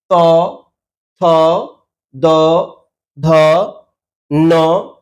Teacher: জীভের সামনের অংশ ওপরের দাঁত স্পর্শ করে শ্বাসবায়ুকে বাধা দেয় ওপরের যে দাঁত আছে সেখানে গিয়ে স্পর্শ করছে এবং বাধা সৃষ্টি করে তারপর প্রাণবায়ু কে ছাড়ছে।